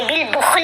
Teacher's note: کی علامت ہے، اس کے اوپر وقف کرنا بہتر ہوتا ہے، جب وقف کریں گے تو لام کو ساکن پڑھیں گے، لام کے نیچے جو زیر ہے وہ نہیں پڑھی جائے گی